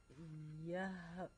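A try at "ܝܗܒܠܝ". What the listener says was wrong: On ne le prononce pas, le Yaouli.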